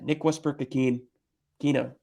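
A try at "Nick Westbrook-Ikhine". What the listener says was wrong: It's a Kine. You said Akina. It's a Kine.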